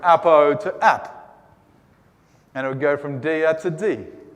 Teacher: if they're followed by a word that begins with a vowel, will lose that final vowel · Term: elision